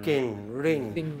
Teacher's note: Voiced velar nasal, as in king, ring.